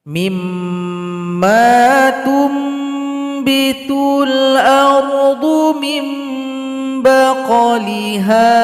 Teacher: Nun sukun atau tanwin berjumpa dengan huruf ba, maka dibaca dengung dan bunyi nun atau tanwin berubah menjadi huruf mim. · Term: iklab